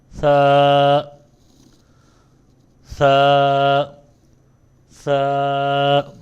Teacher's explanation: دوسرے نمبر پر جو ہے یہ دونوں دانتوں کے درمیان سے ادا ہوتا ہے۔ اوپر والے دانت اور نیچے والے دانت کے درمیان میں جو ہے مڈ میں زبان ٹچ ہوتی ہے، تو پھر یہ ادا ہوتا ہے · ثا، اس میں ایک بات کا خیال رکھنا ہے، جب ہم نے ثا کو ادا کرنا ہے سیٹی کی آواز نہیں آنی چاہیے